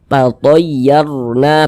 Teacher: Cuman di sini yang kita temui harokat fathah, maka huruf rasukunnya dibaca tafkhim. Tatayyarna, tebalkan huruf ra-nya.